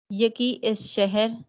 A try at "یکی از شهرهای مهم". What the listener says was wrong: इज नहीं है, यकी अज शहरहाय, शहर नहीं, यकी अज शहरहाय के बजाय शहरहाय मुहिम